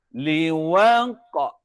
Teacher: Bunyi qalqalah wusta dia melantun ke belakang